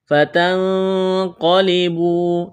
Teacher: اخفا کریں گے، نون ساکن کے بعد قاف ہے، قاف کو موٹا کرنا ہے، واو مدہ ہے۔